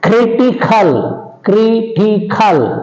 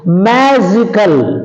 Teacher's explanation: take stress on the anti penultimate syllable from the end